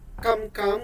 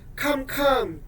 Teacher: the change from unaspirated to aspirated produced a change in meaning